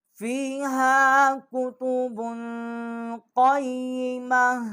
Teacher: آگے یا جو ہے یہ مشدد ہے، اس کے نیچے زیر ہے، آگے میم جو ہے اس کے اوپر زبر ہے، اور جو یہ تا ہے اس کے اوپر ڈبل پیش ہے۔ اب یہاں پر ہم وقف کریں گے تو یہ ہا پڑھا جائے گا، یہ تا جو ہے وہ نہیں پڑھا جائے گا۔